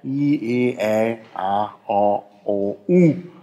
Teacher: Ganz oben I, Zunge etwas runter, E, Zunge weiter runter, Ä und eben ganz unten A.